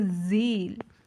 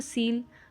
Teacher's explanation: होते हैं जैसे कि जिसमें साउंड कम आता है, जैसे सील, सील पे अगर आप बोलोगे सील तो इतना ज़्यादा वाइब्रेशन वोकल कॉर्ड पे नहीं होगा